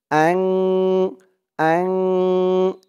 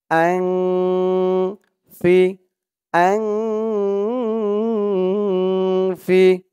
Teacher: নুন সাকিনের পরে ইকফার 15 হরফের এক হরফ ফা আসছে, তাই এখানে ইকফা অর্থাৎ নাকের ভিতরে লুকিয়ে গুন্না হয়েছে।